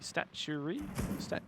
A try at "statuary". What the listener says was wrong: Extra syllable. Shouldn't be that.